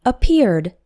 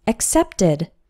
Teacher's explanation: But with the verb accept, the past tense is accepted. Accept has two syllables, and accepted has three. The ed adds an extra syllable.